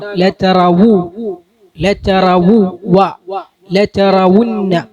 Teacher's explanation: ലതറവു വാവിന് ഹറക്കത്തുണ്ട്. ലതറവുന്ന എന്ന് പറഞ്ഞിട്ട് ലമ്മ് പോകാൻ പാടില്ല, ലമ്മ് ഉച്ചാരണത്തിൽ ഉണ്ടാകണം